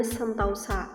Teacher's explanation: Diftongisasi adalah perubahan bunyi vokal tunggal atau yang biasa disebut sebagai monoftong menjadi dua bunyi vokal atau vokal rangkap yang biasa disebut dengan diftong secara berurutan. Perubahan dari vokal tunggal ke vokal rangkap ini masih diucapkan dalam satu puncak kenyaringan sehingga tetap dalam satu silaba.